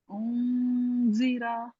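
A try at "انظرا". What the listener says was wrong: जीरा, जीरा, रा को मोटा पढ़ते हैं और लंबा नहीं करते।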